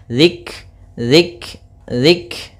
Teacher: kafnya ini punya sifat namanya sifat hamas, yaitu aliran nafas kita atau jaroyanun nafas, maka zik. Nah, dia sebenarnya ada dua sifat.